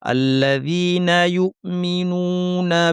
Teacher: ইউমিনুনা হামজাকে শক্ত করে বলবো